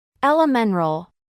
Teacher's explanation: Sin embargo, en algunas palabras que cuentan con esta combinación, no se llega a omitir completamente el sonido de la T, sino que se usa el sonido de la flap T, fusionado con el de la N, en un solo sonido